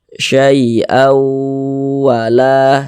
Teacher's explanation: Jadi suaranya itu kita tahan di bagian syai'au-nya itu kita tahan, kita panjangkan sejenak sepanjang 2 harokat. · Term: didengungkan